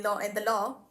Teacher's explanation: There's a subtle R sound, even though the R does not exist there. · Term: intrusion R